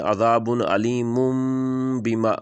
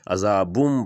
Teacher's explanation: دیکھیں عذاب علیم بما، علیم کے اوپر 2 پیش ہے اور آگے با آ گیا تو اس کو میم میں بدل کے پڑھیں گے، عذابم پڑھیں گے۔